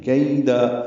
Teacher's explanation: کیدا یا لین ہے، ہونٹوں کو پیچھے کھینچیں گے، نرمی سے پڑھیں گے. کیدا قیدا نہیں پڑھنا.